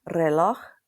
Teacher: at the beginning of a word, it's a rolled and harder R like a double R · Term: rolled r